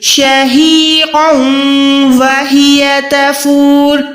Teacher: 2 زبر کے بعد واو آئے گا تو یہاں پر ہم نے ادغام کرنا ہے